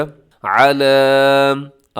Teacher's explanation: नज़्ज़लना अला, आगे क्या है, आइन के ऊपर ज़बर है, लाम के ऊपर खड़ा ज़बर है। आइन को नहीं लंबा करना और लाम को आपने थोड़ा सा लंबा कर देना है।